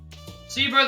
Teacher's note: Placebo, the stress is on the middle syllable.